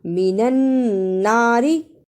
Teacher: شد کو ادا بھی کرنا اور را کو جلدی بھی پڑھنا